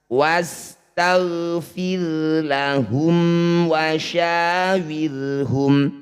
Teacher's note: wasag jangan wasagfirahum ro sukun didahului kasr harus dibaca tarkik atau tipis caranya tempelkan ujung lidah di Pangkal gigi seri atas